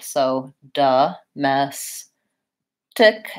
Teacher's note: even though we spell that with an O it's a vowel schwa it's the UH sound